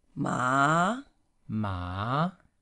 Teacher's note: the second one you can see is going up